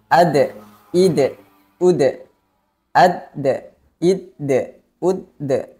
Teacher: jadi dalam keadaan sukun Huruf Dal harus dipantulkan suaranya · Kemudian sifat tambahan huruf dal yaitu qalqalah. Makna qalqalah adalah memantulkan suara ketika huruf dal dalam keadaan sukun